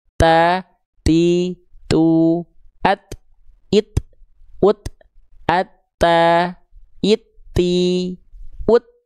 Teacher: Dari segi nafas dia sifatnya hams tapi kadarnya bukan mengalir nafas. Cukup hanya terpercik saja. Dipercikkan saja nafasnya.